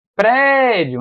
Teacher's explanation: A parte mais forte é o pré